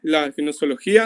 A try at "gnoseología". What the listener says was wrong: no se pronuncia la G, solo se dice nociología.